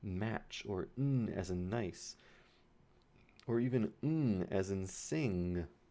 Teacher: Airflow is being stopped in your mouth, but the air is actually going through your nose to escape. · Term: nasals